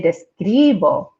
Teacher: making sure to put the stress on that second to last vowel